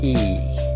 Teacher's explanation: bacanya itu i, nyengir gitu ya, jadi agak panjang